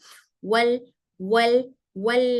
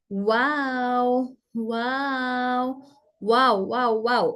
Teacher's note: से यह वाव गैर मद्दा है इस तरह निकलता है कि दोनों होट गोल शक्ल बनाते हैं मगर एक दूसरे से पूरी तरह नहीं मिलते